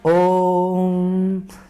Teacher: इसके उच्चारण में 3 मात्रा का समय लगता है। यानी कि हम बोल सकते हैं कि ह्रस्व स्वर से 3 गुना समय लगता है, ह्रस्व स्वर से 3 गुना समय लगता है। · जैसे हम ओम बोले तो ओम तो झटके में बोल नहीं सकते, बोलते हैं ओम, तो क्या हुआ, आवाज को हम थोड़ा खींचे, तिगुना समय लिए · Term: प्लुत स्वर